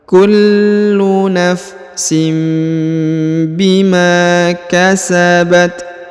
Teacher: huruf Ma dipanjangkan dua harakat karena di depannya terdapat Alif Kullu nafsim Bima kasabat kasabat kemudian huruf ta kita hembuskan nafas